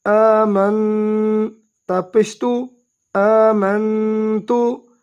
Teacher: میم کو نون کے ساتھ ملائیں گے، میم نون زبر من غنہ بھی کریں گے